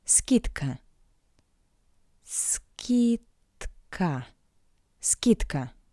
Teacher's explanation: The voiced consonant D in front of the voiceless consonant K sounds like its paired consonant T. D, T. Скидка.